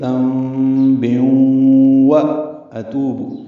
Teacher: واو سے ملا دیں گے، ادغام ہوگا غننے کے ساتھ، وَأَتُوبُ، واو ہونٹوں کی نا تمام گلائی سے ادا کریں گے